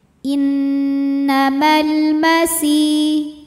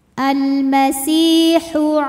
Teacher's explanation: Innamal masih, si ada matobi'i zahiri. Sebab ada ya sukun yang sebelumnya berbaris kasroh. Maka cara bacanya panjang 2 harokat.